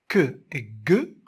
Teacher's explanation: que et ge sont les seuls vélaires du système. On ne trouve aucune autre paire qui contient deux phonèmes vélaires.